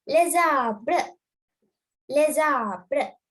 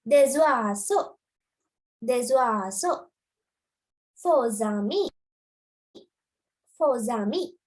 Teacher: then when you're pronouncing it, have a small slight Z sound. දෙක එකට එකතු කරලා චූටි Z sound එකක් ගන්න.